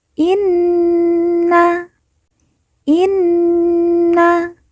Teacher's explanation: Nun yang bertasdid kita baca ditekan ditahan didengungkan dua harakat